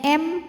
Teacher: Sebab ada mim sukun yang menghadapi huruf selain mim dan ba, di mana di sini hurufnya adalah huruf hamzah. Maka mim sukun ini kita bunyikan dengan jelas, idhar. Bunyinya M, tidak ditahan.